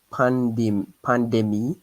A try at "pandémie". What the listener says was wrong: Not pond. No, there's no pond. Pond. Pan is not pun. It's pond. Not pandemic. It's pandémie. Pandémie.